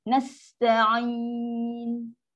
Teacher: Nun ada sifat gunah yang paling minimum.